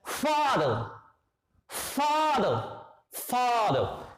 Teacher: So er will give the sound of schwa.